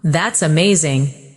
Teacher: When you say, That's amazing, your tone rises with excitement. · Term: rising tone